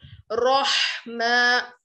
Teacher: हा की आवाज हलक से निकालनी चाहिए